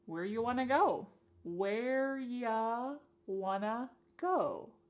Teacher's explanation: You becomes y and want to becomes wanna. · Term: reduction